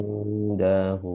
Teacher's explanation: dengungnya panjang dua harokat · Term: ikhfa